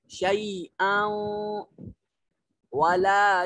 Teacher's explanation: کے بعد یرملون میں سے واو ہے، تو یہاں ادغام ہوگا، حمزہ کی جو تنوین ہے اس کو واو کے ساتھ مدغم کر دیں گے